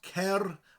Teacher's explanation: the word cer with a rolling R, cer, and a th.